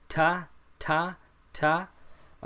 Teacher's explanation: The tongue behind the teeth, ta, ta, ta. There's no pop. There's no special quality about this letter. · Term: regular T